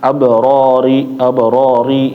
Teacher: Jadi, ri itu adalah tipis. Jadi, jangan sampai dibaca tebal. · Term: tarqik